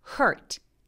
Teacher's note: 얘는 바로 R 발음으로 H에서 R 발음으로 바로 가시는 거예요.